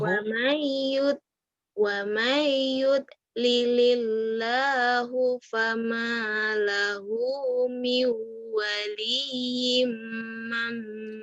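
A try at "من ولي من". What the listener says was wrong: mim. Waliyim mim. Waliyim coba. Waliyim mim bukan mam.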